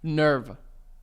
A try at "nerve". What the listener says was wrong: Like the E is silent. You're adding an A. Nerva. You're saying Nerva.